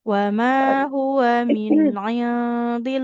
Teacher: Lafaz Allah itu apabila huruf sebelumnya kasroh dia tipis lamnya.